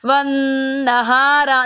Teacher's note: نون مشدد پہ غنہ کیا جا رہا ہے